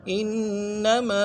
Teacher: انما میں جو ہے تشدید ہے، زور دیں گے، اور ما میں الف مدہ کھینچیں گے